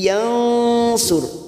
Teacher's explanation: nun sukun bertemu shad, ikhfa hakiki. Kita samarkan bunyi nun sukun 3 harokat. Yansur, ro sukun yang didahului dumah, kita baca tafkhim.